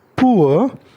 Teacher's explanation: यहाँ पर ग्लाइडिंग ऊ से अ पर हो रही है